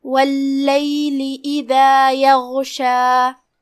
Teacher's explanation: کلمت یغشا میں یہاں حرف الغین ہے. غین کی ادائیگی حلق کے اوپر والے حصے سے ہے. غین حروف التفخیم میں سے بھی ہے، لہذا اسے بھاری آواز میں ادا کرنا ہے. اور جو کہ آخری کلمہ میں مد طبیعی ہے، لہذا 2 حرف کی مقدار میں ہم اپنی آواز لمبی کریں گے.